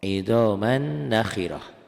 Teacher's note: Itu idgham bigunah disertai dengan dengung ditahan.